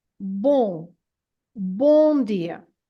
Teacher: word b it has an an m at the end and this m at the end is not to be pronounced as a m sound as an M sound it's just there to make the nasal sound of the O